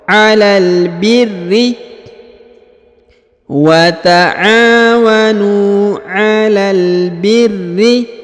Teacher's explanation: Huruf ra ditahan dan ditekan karena terdapat tasdid pada huruf ro ya.